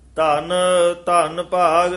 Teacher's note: ਇਕ ਧੰਨ ਕਸ ਕੇ ਬੋਲਣਾ ਦੂਜਾ ਥੋੜਾ ਜਿਹਾ ਪੋਲਾ ਉਚਾਰਨ ਕਰਨਾ